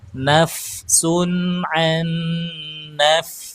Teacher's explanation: Fanya itu kan pakai e gigi ketemu bibir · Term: huruf Fa